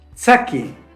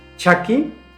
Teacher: C es africada alveolar sorda. Che, consonante africada palatal sorda.